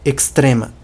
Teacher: A pronúncia não é a mesma, mas onde tinha um X do português, vira um KS.